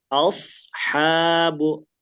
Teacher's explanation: Tapi kalau shad dia membulat menebal.